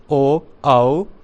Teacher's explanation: ओष्ठ plus कंठ, जो दोनों से बोले जाते हैं